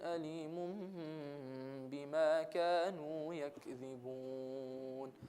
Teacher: we don't just do iqlab, we do iqlab with the ghunna. The ghunna being the nasal sound and the small hold.